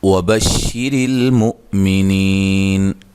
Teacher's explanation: را کو باریک، حمزہ کو جھٹکے سے نی یا مدہ ہے، تو وقف کی صورت میں نون ساکن ہو جائے گی، اور مد کے ساتھ وقف کیا جا سکتا ہے۔